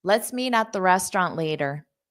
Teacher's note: in American English R is a strong sound so you will hear it at the end